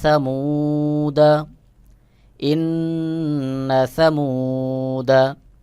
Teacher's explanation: যেগুলো আলিফের উপরে গোল চিহ্ন দেখছেন প্রত্যেকটা আলিফ আলিফে জায়েদা আমি কিন্তু প্রত্যেকটাই টান ছাড়া উচ্চারণ করতেছি